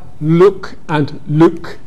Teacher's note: Scottish accents make this distinction, look and luck, but look and luke would be the same. They don't have a difference between oo and uh. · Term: foot-goose merger